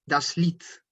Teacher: Cuando está la I y luego una E, solamente suena la I. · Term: diptongo, el IE